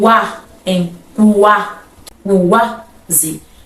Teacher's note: No crescente é o contrário. Primeiro eu pronuncio a semivogal e depois eu pronuncio a vogal. Então, ó, baixinho, depois sobe, por isso é crescente. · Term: ditongo crescente